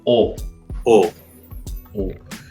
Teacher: que es completamente O. Es el más redondo, el más profundo.